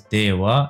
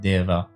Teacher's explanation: the Vet is pronounced as a W in a lot of modern Eastern Assyrian-Aramaic dialects. So that's the reason why I pronounce it as Dewa instead of Deva.